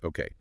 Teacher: the okay has a rise in intonation